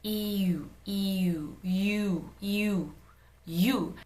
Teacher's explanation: In English, EU is just pronouncing E and U consecutively, like very quickly.